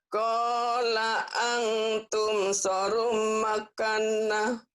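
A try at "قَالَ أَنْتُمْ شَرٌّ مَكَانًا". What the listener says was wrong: Qala atum syarrum makan. Syarrum. Bukan sarom. Syarrum. Syarrum. Makana. Qala antum syarrum makana.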